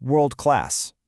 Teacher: you get the R colored vowel, the R sound, and that dark L